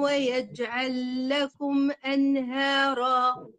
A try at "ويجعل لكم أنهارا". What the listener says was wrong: القلقلة عندك ضعيفة ليه بقى؟ كلمة ويجأ فيها قلقلة، ويجعل، وهنا ويجعل.